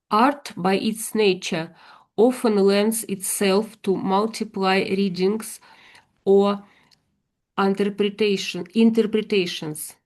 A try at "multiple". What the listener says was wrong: It's just this word here. You're saying multiply. It's more multiple, multiple. So they are sort of related, obviously, but they're not. So multiply means 2 times 3 is 6. Multiply, that's multiply. But multiple here means many, many different readings or interpretations. Just mean effectively could mean many or more than one.